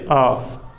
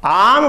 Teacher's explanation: आम पर हम आ पे ज़्यादा समय लेते हैं, ज़्यादा होल्ड करते हैं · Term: दीर्घ